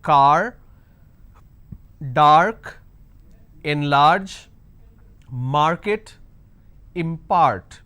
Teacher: these words have the long vowel sound which is ah